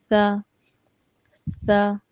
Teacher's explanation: زبان کی نوک کو اوپر کے دانتوں سے لگائیے اور بالکل نرمی اور باریک ادا کیجیے